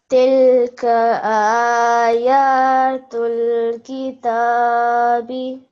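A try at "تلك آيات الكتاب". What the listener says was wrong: Excellent, well done. You made sure that your vertical fathahs were 2 seconds long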